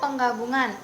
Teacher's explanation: Bunyi morfem N menjadi eng